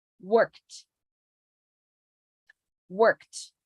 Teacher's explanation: ignore the e pronounce it like a t